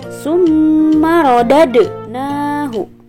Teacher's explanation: huruf Dal berharakat sukun maka cara membacanya harus di pantulkan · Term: Qalqalah